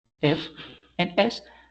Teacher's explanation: when we pronounce the sound they generate we are not going to feel any kind of vibration · If you do the exercise with me, you are going to feel that there is no vibration in your throat when you pronounce those sounds. So we have a lack of vibration. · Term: voiceless sound